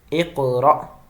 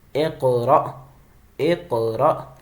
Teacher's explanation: قاف کے اوپر قلقلہ ہو رہا ہے، حمزہ ساکنہ ہے، لہذا یہاں پہ ہم جھٹکا دے رہے ہیں۔